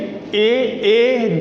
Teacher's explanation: अब ए यानी ए जो है पहले से ही आपको पता है कि मैंने बताया था पिछले वीडियो में, ए का निर्माण कैसे हुआ, अ और ई के योग से। तो अ का कंठ और ई का तालु, यानी कंठ प्लस तालु बराबर कंठ तालव्य स्वर हैं